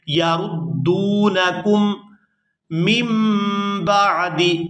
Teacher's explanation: یہاں دال کو واو ساکن کے ساتھ ملائیں گے تو کھینچ کر ادا کریں گے